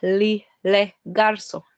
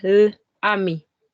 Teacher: We see the vowels of the definite articles l and le and la are deleted. So the vowels here e and a. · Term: vowel can also be deleted